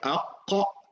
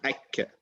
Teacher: There are 2 letters that come from the back of the tongue. It's qaf and kaf.